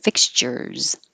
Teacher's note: That last S looks like an S, but sounds like a Z because it comes after the R.